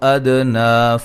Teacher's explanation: اور دال پہ قلقلہ ہے